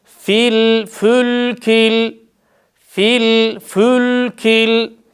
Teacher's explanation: Burada da sakin mim harfinde dudaklarımız ileride olacak. Çünkü önceki harfin harekesi ötre olduğu için dudaklar ileride kalacak.